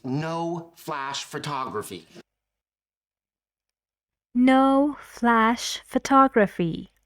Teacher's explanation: So he's saying this with a lot of stress, with a lot of pauses, and still he wants to sound friendly, as I told you. And he is using rising intonation on all the words. So he sounds more friendly than Penny.